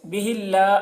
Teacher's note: اللہ کلام سے پہلے زیر ہے، اللہ کلام کو باریک پڑھیں گے۔